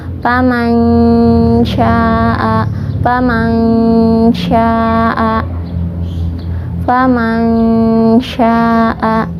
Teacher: makhraj shin itu dari tengah lidah, dan huruf yang dari tengah lidah itu ada 3 yaitu jim, shin, dan ya.